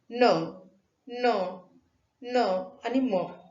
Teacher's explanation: ज्याचं उच्चारण हवा नाकातून बाहेर पडल्याने होते त्यांना अनुनासिक म्हणतात.